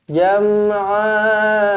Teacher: Matikan mim mati di sini dengan jelas dan terang, iaitu hukum tajwidnya adalah izhar syafawi. Jam'ani, kepitkan sikit huruf ain di kerongkong. Jangan buka, jangan jam'a.